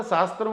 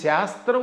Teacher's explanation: స అనేది దంత్యం శ అనేది తాలవ్యం